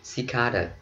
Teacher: Trọng âm rơi vào cái âm thứ hai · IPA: /sɪˈkɑːdə/